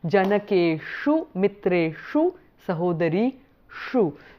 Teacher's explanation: the dental sa becomes the cerebral sh in the vicinity of the sound e